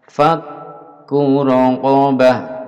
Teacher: kaf dengan tashdid, dilipat dua, dipegang untuk menunjukkan tashdid